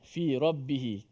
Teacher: Fi rabbihi juga dibaca panjang sebanyak 4 ataupun 5 harakat. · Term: mat silah tawilah